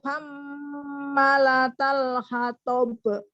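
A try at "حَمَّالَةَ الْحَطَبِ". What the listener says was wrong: Bagus, tapi ma-nya panjang, ada alifnya.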